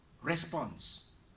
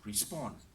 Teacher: As a noun, it is response. Stress on the first syllable. As a verb, it is respond. Stress on second syllable.